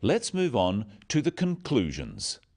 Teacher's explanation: Stressing conclusions because it's the key word in this sentence. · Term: sentence stress